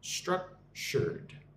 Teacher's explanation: Emphasis on the first syllable